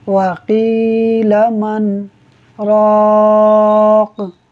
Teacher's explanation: اب آپ یہاں پر دیکھیے کہ ہم نے من کے اوپر سکتہ کیا ہے، تو من کے اوپر آواز کو روک دیا مگر سانس کو ہم نے جاری رکھا، اور اس کے بعد آگے جو قاف ہے، قاف کے اوپر کاف کے نیچے 2 زیر کی تنوین ہے، اور یہاں آیت بھی مکمل ہو رہی ہے، تو یہاں پر جب ہم نے وقف کیا تو ہم نے قاف کو ساکن کر دیا، تو ہم نے پڑھا وَقِيلَ مَنْ رَاقٍ۔